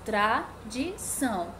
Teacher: tá tradição números de sílabas trissílaba a sílaba tônica trade tão o tão é a sílaba tônica